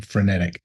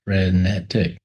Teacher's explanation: You kind of get a stress on the middle of the word, but you also parse the word in certain ways.